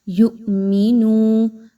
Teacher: یؤمنو پہ دیکھیے تو حمزہ کے اوپر جزم کی علامت ہے، جو کہ اس طرف اشارہ کر رہی ہے کہ آپ نے حمزہ کو تھوڑا سا جھٹکا دے کر پڑھنا ہے